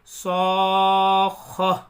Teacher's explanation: جب گولتا پر ہم وقف کریں گے تو وہ ہائے ساکنہ بن جاتی ہے جیسے صاخہ ہا بولیں گے اس کو تا نہیں پڑھیں گے.